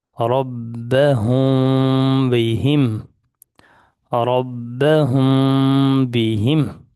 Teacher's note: میم ساکن کے بعد حرف با آیا ہے تو یہاں پہ اخفا کر کے پڑھیں گے، تھوڑا سا غنہ